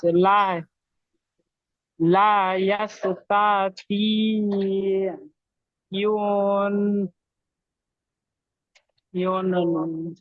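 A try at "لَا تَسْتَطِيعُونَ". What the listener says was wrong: ইউন নয়, আইন ও পেশ উ হয়, ইউ হয় না। লা তাস্তাতিউনা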